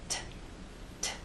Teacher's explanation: when it drops down there's a puff of air a release of air